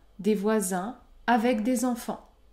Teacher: je ne fais pas la liaison après le mot voisin